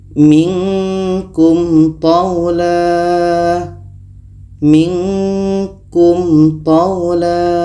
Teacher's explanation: Ada mim mati bertemu ta. Ini izhar syafawi, dua-duanya dibaca jelas dan tidak dengung.